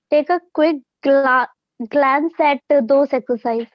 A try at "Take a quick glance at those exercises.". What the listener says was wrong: Exercises, plural. Read it again. Take a quick glance, take a quick look at those exercises.